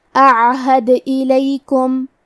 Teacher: عین کی ادائیگی حلق کے درمیان والی حصے سے ہے